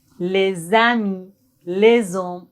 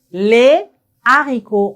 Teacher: Quand on a le H mué, on doit faire la liaison comme les voel les amis, les hommes, on fait la liaison. Mais quand on a le H aspiré, on doit pas faire la liaison.